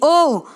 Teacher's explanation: तो ओ और औ कैसे वर्ण है, कंठ ओष्ठ्य वर्ण है